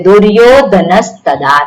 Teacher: એટલે વિસર્ગનો શું થશે સકાર થશે કારણ કે એ દંત્ય છે ત એ દંત્ય છે માટે ત્યાં દંત્ય સકાર આવશે એટલે દુર્યોધનસ્તદા થાય જે આપણે નિયમો જોયા છે વિસર્ગ સંધિના એ